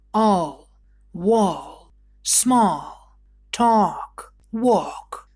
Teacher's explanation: Буква A читается как долгая О перед буквой L во многих словах. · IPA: [ɔː]